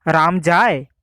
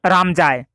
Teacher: বাক্যের শেষের দিকে সুরটা উপরে উঠে গেছে বলেই বাক্যটা প্রশ্নের অর্থ বহন করে